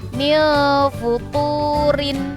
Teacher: rinnya harokat kasrotainnya itu dibaca tipis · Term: ro tarkik